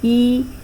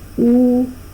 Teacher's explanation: in the case of E, it is the front of the tongue that is raised, and in the case of U, it is the back of the tongue.